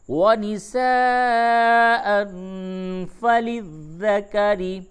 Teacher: تنوین کے بعد فا ہے، اخفا ہوگا